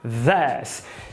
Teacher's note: Interdental vozeada, mais um i relaxado, mais um s. This. Lembrando que o fonema final dessa palavra é um s, é this.